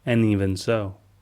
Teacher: The D sound in and fades away, and even combines to sound like uneven.